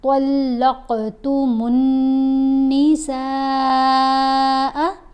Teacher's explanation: یہاں ہم نے قوف کے اوپر کلکلا کرنا ہے، قوف کو موٹا بھی پڑھنا ہے اور اس کی آواز کو تھوڑا سا ہلا کر بھی پڑھیں گے۔ طا کو بھی ہم نے موٹا پڑھنا ہے۔